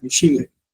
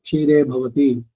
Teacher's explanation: ಕ್ಷೀರೆ ಮಹಾಪ್ರಾಣ ಬೇಡ, ಅಲ್ಲಿ ಅಲ್ಪ ಪ್ರಾಣ ಇರ್ಬೇಕು.